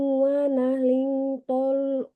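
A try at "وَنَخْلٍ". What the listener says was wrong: Wa nakhlin. Tambahkan gunnahnya. Wa nakhlin. Panjangin.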